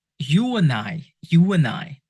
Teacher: those vowels and the next word starts with a vowel sounds try to insert like a w like a w sound between those vowel sounds